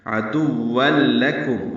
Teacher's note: عدوا، عین وسط حلق سے ادا کریں گے، دال کو واو سے ملائیں گے. تنوین کے بعد لام آنے کی وجہ سے ادغام کامل ہے. عدوا لکم، واو کو لام سے ملا دیں گے.